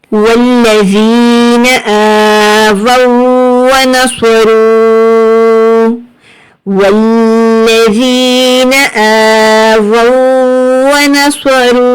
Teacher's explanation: واو مد پیش رو. 3 سے 4 حد کھینچ کر پڑھیں گے